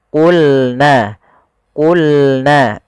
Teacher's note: Huruf qof, pangkal lidah kita harus kita angkat sehingga dia makhraj daripada huruf qof itu pangkai lidah dengan langit-langit atas maka dia menempel.